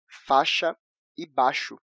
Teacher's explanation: a letra I acaba sumindo da pronúncia